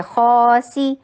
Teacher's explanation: सी short and whistle की sound दीजिए।